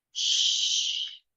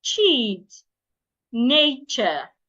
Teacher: for the SH sound, put your teeth together, release the sound slowly. For the CH sound, put your teeth together and release the sound suddenly. Now, there are some CH words that when you want to pronounce them, you need to act like you're pronouncing SH word.